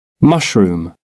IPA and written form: mʌʃrʊm (mushroom)